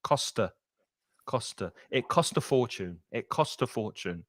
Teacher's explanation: it joins on that consonant sound and the vowel sound they link together